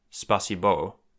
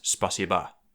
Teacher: unstressed rounded vowels unround, like they do in Russian